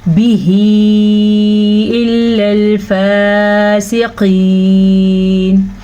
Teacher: قاف کو پر پڑھیں گے, قاف ہمیشہ ہی پر پڑھا جاتا ہے